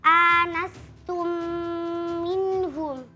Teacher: Yang pertama pada kata anastum minhum hukumnya idgham mimi. Karena mim sukun bertemu dengan huruf mim maka dibaca mendengung.